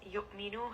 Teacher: Rest on this. Yu'minu, hamza has a jaha, so make sure you are stopping that sound, giving it that correct amount of jerkiness